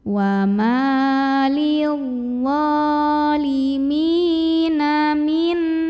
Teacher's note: Lidzalimina, mim mad tabi'i karena ada ya sukun yang didahului baris kasroh. Cara membacanya dipanjangkan mimnya ini 2 harokat.